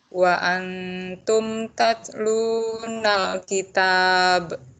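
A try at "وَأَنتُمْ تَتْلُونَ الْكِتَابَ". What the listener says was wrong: coba pengucapan nalki itu jangan sampai suara terputus. Tatlunal kitab. Ulangi.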